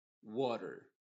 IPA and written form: ˈwɔːtər (Water)